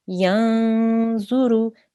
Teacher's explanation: see there is a nun sakin that comes before it. So it would be yanzuru. We make a nasal sound there.